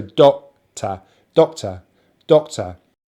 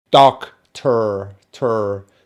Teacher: My accent is a non-Rhotic accent, so I do not pronounce the letter R if it is not followed by a vowel sound.